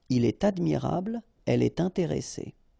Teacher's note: you should make the liaison, and in that case it's with T.